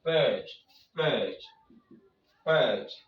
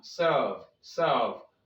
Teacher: ER is pronounced when the syllable in which it is found is stressed. So we pronounce it as a long R.